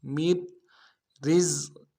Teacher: نون ساکن کو نہیں پڑھیں گے، آگے را کے ساتھ ملانا ہے. میر رزق اگلے را کو باریک کریں گے، پہلے را کو باریک کرنا ہے ساکن والے، اور اگلے را کو باریک کریں گے، زا کے ساتھ ملانا ہے، زا کی سیٹی نکالیں گے.